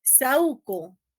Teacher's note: Como la U tiene presencia sonora, se separa, ¿no? Y aquí ocurre un hiato de tipo acentual.